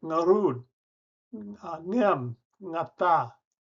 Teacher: In my other language, Ilocano, it uses an initial NG, something that English never allows.